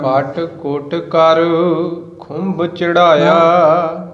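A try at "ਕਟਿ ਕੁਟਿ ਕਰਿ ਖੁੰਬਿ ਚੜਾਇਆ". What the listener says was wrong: ਖੁੰਭ ਭਾਰਾ ਦੇ ਭੱਬਾ ਹੋ ਗਿਆ ਨਾ, ਫਿਰ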